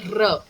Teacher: getting a r sound from the back of your throat